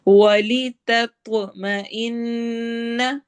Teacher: تا اور طوا دونوں قریب قریب مخرج کے ہیں، تا باریک ہے، طوا ہیوی ہے، موٹا ہے